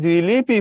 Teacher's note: এই যে মধ্যস্বর আ সেটা ই তে রূপান্তরিত হয়েছে বাকিরা যেমন ছিল তেমনই আছে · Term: মধ্যগত স্বরসঙ্গতি